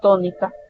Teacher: tónica tiene tres sílabas y la tiene en su antepenúltima sílaba